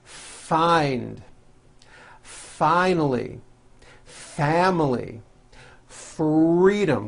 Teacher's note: you need to hear the air friction when practicing try to give the F One Beat